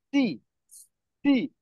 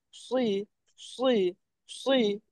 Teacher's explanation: দেখেন এই দুইটা আমি কিভাবে পার্থক্য করতেছি শুনেন। প্রথমটা একদম পাতলা করে পড়তেছি সি, সি, একদম পাতলা সাউন্ড হচ্ছে। আর পরেরটা দ্বিতীয়টা কিন্তু মোটা হচ্ছে সুই, সুই, সুই।